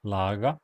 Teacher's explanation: a voiced velar fricative